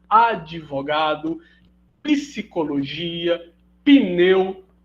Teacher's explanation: nem consigo pronunciar assim de forma natural você acaba fazendo que a epêntese do izinho ali para constituir uma nova sílaba